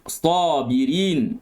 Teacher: Sa ditebalkan kerana dia merupakan huruf itbaq. Pangkal lidah naik dan tengah lidah melengkung. Maka terhasillah tebal itu.